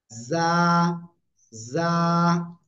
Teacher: জিহ্বার আগা, এর নিচের দুই দাঁত, দুই দাঁতের পেট ও আগার সাথে লাগাবো, লাগিয়ে ঝিঝি পোকার ন্যায় হালকা আওয়াজ করে আমরা উচ্চারণ করব, নরম করে।